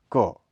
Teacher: इसके उच्चारण में जीभ के पिछले भाग से कोमल तालु का स्पर्श होता है। यह अघोष एवं अल्प प्राण स्पर्श ध्वनि का उदाहरण है।